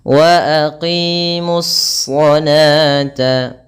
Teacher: Ini adalah alif lam yang kita tulis tetapi tidak kita baca, sehingga alif lam tersebut langsung di-idgham-kan atau digabungkan ke dalam shad, sehingga shad tersebut membawa tashdid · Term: alif lam syamsiyah